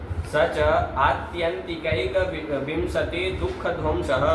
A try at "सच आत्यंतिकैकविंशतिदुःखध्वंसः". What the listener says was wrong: फिर 2 बार विंशति विंशति बोले।